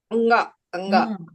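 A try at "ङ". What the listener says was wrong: మళ్ళీ గా ఫుల్ గా పలకూడదు. గా ఫుల్ గా పలకూడదు అంటూ అక్కడితే ఆపేయాలి దాన్ని.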